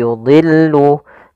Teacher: termasuk huruf tafkhim maka dia tetap dia ditebalkan